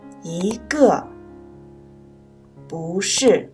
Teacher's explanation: 在四声音节前读二声一和不